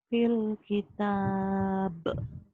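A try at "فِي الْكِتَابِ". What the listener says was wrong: bukan bil, ini fil. fil ya. jadi kedengarannya kayak bil ya, fil kita. Airnya belum banyak, diairin lagi. Fil kita.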